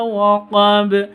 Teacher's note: Kalau waqaf berarti jadi, kalau sukun berarti jadi qalqalah. Qalqalahnya ada di waqaf, berarti qalqalah kubra seperti itu.